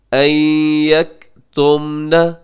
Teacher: آگے لہن، یہاں نون مشدد ہے، یہاں غنہ کیجیے گا، ان یکتمن، یہاں نون ساکن کے بعد یا ہے، اب یہاں پہ ادغام کریں گے غنے کے ساتھ